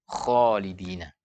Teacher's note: lidah sementara yang benar sifatnya adalah istilah harus diangkat pangkal lidah dengan diangkatnya pangkal lidah maka huruf akan terbaca dengan tebal